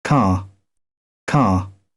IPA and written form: kɑː (car)